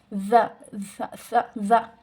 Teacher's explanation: زبان کی نوک اور سامنے کے اوپر والے 2 دانتوں کے کنارے سے ادا ہوتی ہیں